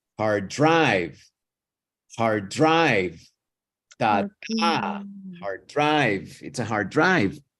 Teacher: pay attention how Drive is bigger longer in pronunciation